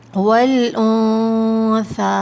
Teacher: یہاں نون ساکن پر اخفا کریں گے، ناک میں چھپا کر غنہ کیا جائے گا